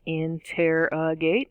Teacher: interrogate is four syllables in tear a gate again stress on the second syllable